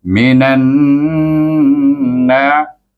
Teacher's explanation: Kalau idgham masukkan saja, tapi ada dengung kerana nun bertasydid. Minan na, itu idgham syamsi dan didengungkan dua harakat.